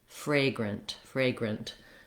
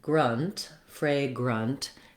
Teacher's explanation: in the second syllable we don't say it like a grant we don't have the black cat vowel there we have a schwa there which sounds like uh